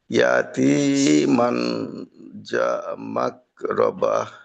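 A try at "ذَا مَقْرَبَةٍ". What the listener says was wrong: আচ্ছা, এখানে দুইটা বিষয়। একটা হলো জালকে তার নিজ মাখরাজে রাখা, আর মাক, কফকে আরেকটু ধাক্কা খাওয়াইতে হবে। মাক, মাকরাবা, যা মাকরাবা।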